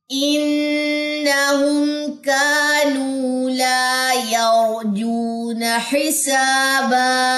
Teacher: یہاں پہ نون مشدد کا غنہ کرنے کے بعد نون کی زبر لمبی نہیں کرنی. انہم نہیں پڑھنا, انہم.